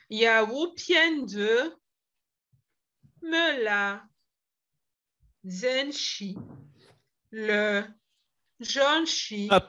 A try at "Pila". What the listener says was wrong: Pila, ne dis pas le.